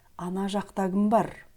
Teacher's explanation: слово «кім» в этом предложении произносится как «гім». «Ана жақта кім бар» в быстрой речи, потому что перед звуком «к» стоит гласный звук «а», поэтому он произносится как «г».